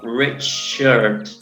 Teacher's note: El caso de Richard también está acentuada en la primera sílaba